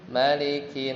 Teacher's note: Nun itu mesti ditahan ya jangan cepat-cepat misalnya birabbinas malikinas gitu enggak tapi harus dikasih ee tempo ya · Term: gunah